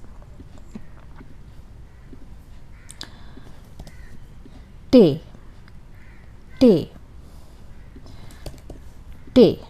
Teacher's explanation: it is very much like the English telephone or country or something like that, but the English T is aspirated. This one is more sharp. Ta, retroflex.